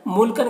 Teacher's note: मुल्कन के तनवीन में इजहार हो रहा है, इसे जल्द पढ़ना है